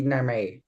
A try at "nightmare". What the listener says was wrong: So just careful how you pronounce nightmare. Have to make that t sound in the middle. Nightmare. Nightmare. Nightmare.